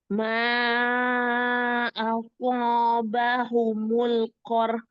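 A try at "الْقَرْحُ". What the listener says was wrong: Qarh. Ada haknya juga di belakangnya. Qarh.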